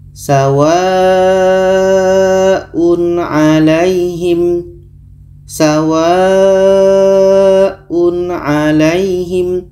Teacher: dibaca jelas kita baca sawaun alaihim sawaun alaihim tanwin Jelas oke tanwin dibaca jelas dibaca jelas dan tidak dengung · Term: izhar halq, izhar halki